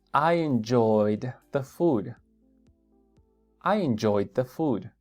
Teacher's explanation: enjoyed se pega con el D entonces casi suenan pegados